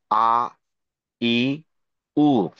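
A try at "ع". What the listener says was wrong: আইনের উচ্চারণটা কিন্তু আরেকটু চাপ রাখতে হবে। গতকাল বলছিলাম যে আইন কিন্তু একটু হ্যাঁ হ্যাঁ, বাংলাতে আইনের মতো উচ্চারণ নেই। যেমন এইটা হয় আ, রি, উ। একটু গলায় চাপ দিয়ে আ, রি, রু, এ ধরনের।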